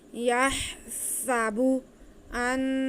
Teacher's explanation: نون مشدد، اس پہ گنہ کریں گے ایک الف کے برابر